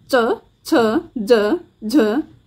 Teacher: जीवा कठोर ताल पर जाकर स्पर्श कर रही है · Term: च वर्ग की ध्वनियां, तालव्य ध्वनियां